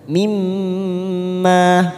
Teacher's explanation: Mimma, ada mim yang bertasdid, namanya bacaan gunnah. Mimma, ma-nya kita panjangkan 2 harokat.